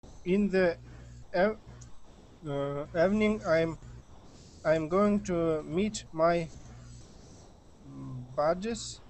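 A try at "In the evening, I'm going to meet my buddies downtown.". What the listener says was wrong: Okay, excellent.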